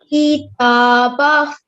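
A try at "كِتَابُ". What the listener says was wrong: Okay, the ba here carries a zamma, so make sure to read it. Again, ta will be the longest. Try the ta with 2 counts.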